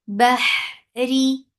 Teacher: Bahri for kasra, give e sound. This ra is light. Whenever ra is with kasra, it is light.